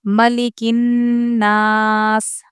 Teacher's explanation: نون پر حرف مدہ کا الف ہے، اس سے ہم اس کو کھینچیں گے اور یہاں پر ہم وقف کریں گے کیوں جزم لگاتے ہوئے، کیونکہ زے پر وقف کرنا ہوگا تو جزم لگانا ہوتا ہے۔